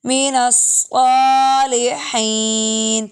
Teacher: صاد موٹا ہے ہا باریک